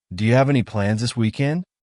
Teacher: it's very common to ask any plans this weekend and again Rising intonation to show it's a question